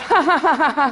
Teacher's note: you find nasality in posed laughter, that kind of ha-ha-ha-ha sound that you never get, you could not do if you were laughing involuntarily